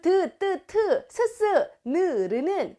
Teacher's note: 바로 잇몸에서 소리가 난다 해서 잇몸 소리